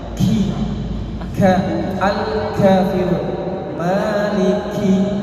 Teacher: Tapi kalau Al-Quran harus ada hembusan nafasnya, harus ada hemesnya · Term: huruf kaf